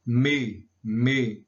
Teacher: são pronunciadas a partir da saída do ar pelo nariz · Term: nasais